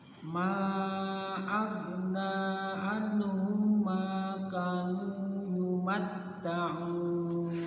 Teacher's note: Hum namanya idgham mimi, mim mati ketemu mim. Ditahan.